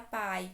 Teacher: primeiro a vogal depois a semivogal i também oral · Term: ditongo decrescente